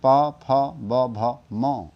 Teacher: ओठ पर टकरा कर के बाहर निकल रही है ध्वनि ओष इनका उच्चारण स्थान इसलिए ओट कहा जाता है इसके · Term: प वर्ग